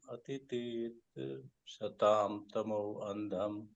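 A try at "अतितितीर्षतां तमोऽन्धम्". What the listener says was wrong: It is ati tir tir shatam tamo andam. There are 3 T's. Ati tir tir shitam. Adhyatmadipam atitir tirshatam tamo andham. Adhyatmadipam atitir tirshatam tamo andham.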